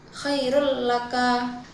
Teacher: Kemudian pada lafaz khairul laka itu terdapat hukum idgham bila ghunah karena tanwin bertemu huruf lam. Cara membacanya dengan memasukkan suara tanwin ke huruf lam tanpa dengung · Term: idgham bila gunnah